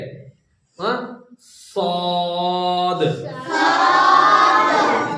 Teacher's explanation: जुबान का किनारा नीचे के दो दांतों के ऊपर के किनारे को लगे।